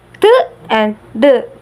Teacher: alveolar stop is produced by pressing the tip of the tongue against the alveolar ridge, which is located behind the teeth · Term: alveolar stops